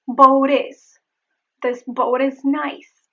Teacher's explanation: There is the flap T in the word boat. The final T becomes a flap T.